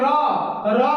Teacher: र का उच्चारण स्थान कहां से होगा मूर्धा से होगा